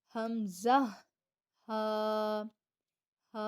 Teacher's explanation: اقصی حلق جو ہے وہ نچلا حصہ ہے، تو وہاں سے ادا ہوگا حمزہ، ہا۔ اگر آپ اپنا یہاں پر فنگر کرتے ہیں، ٹھیک ہے، ادا کرتے وقت، تو دیکھیں وائبریٹ ہوگا، ہمارا جو سینہ ہے وہ وائبریٹ ہوگا۔